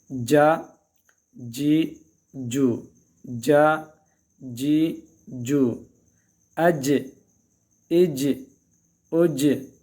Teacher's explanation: جیم کا جو مخرج ہے اس زبان کے جو درمیان ہے اور جو اوپر کے جو تالو اس کا جو درمیان ہے وہاں سے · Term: حروف قلقلہ